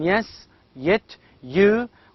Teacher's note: we have only one sound that is palatal glide